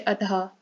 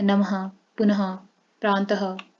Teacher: विसर्ग का चिन्ह ऊपर नीचे दो बिंदु होते हैं। यह कंठ से बोला जाता है। इसकी ध्वनि ह के समान सुनाई देती है,